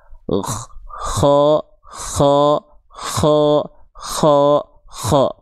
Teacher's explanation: dari sana bagian terluar tenggorokan kita dengan mengalirkan nafas. Seolah karakternya seperti mengorok atau mendengkur. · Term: huruf ko